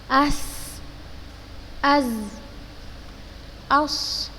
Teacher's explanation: tajamnya suara karena ia keluar dari celah yang sempit antara ujung lidah dengan 2 gigi seri atas dan bawah. Untuk bahasa yang lebih bisa dipahami, keluarnya suara, tambahan suara dari celah antara ujung lidah dengan 2 gigi seri atas, dengan 2 gigi seri atas dan bawah. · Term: sofir